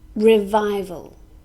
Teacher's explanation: this is a noun has three syllables and we stress the second syllable